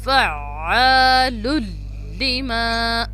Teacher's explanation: عین ہے, اس کو مڈل تھروٹ سے ادا کریں گے. فعال لما. میم زبر کے ساتھ الف ہے تو ایک الف کی مقدار کے برابر اس کو ہم لمبا کریں گے.